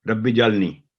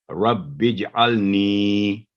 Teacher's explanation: نون کے نیچے کسرہ اور آگے یا پر جزم ہے، تو نی 2 سیکنڈ آواز لمبی کر کے ربج النی، تو ربی جالنی غلط ہوگا.